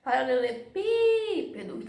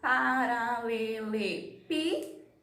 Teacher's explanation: Tem a última, penúltima e a antepenúltima, que foi a mais forte. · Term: proparoxítona